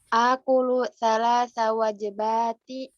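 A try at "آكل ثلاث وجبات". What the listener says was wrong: Wajah, jimnya fathah kalau jamaknya. Salasa wajabatin. Wajibatun mufrad. Wajibatun. Mufrad tunggal tuh. Kalau jamaknya, jamak muannats salimnya wajabat, ya.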